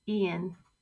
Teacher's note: the V sound gets removed e'en means even I always ask does library work take the